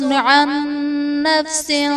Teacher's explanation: عن نفس میں نون ساکن کے بعد حروف یرملون میں سے نون ہے تو یہاں پر ادغام مع الغنہ کا قاعدہ ہوگا، یعنی نون ساکن میں ہم غنہ کر کے پڑھیں گے۔